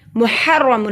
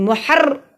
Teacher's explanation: वह हुआ मुहर्रमुन, मुहर्र देखिए रॉ पे ऐसे ज़बान करती है जैसे वाइब्रेशन हो रही है, और रॉ को मोटा पड़ा जाएगा, रॉ के ऊपर ज़बर है, और रॉ से पहले भी ज़बर है देखिए, और रॉ पे शद है।